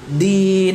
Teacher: dia hurufnya jahr ya, dan syiddah. Jadi tertahan suara dan nafasnya. Din. Kalau ta itu kan tertahan suaranya, mengalir nafasnya.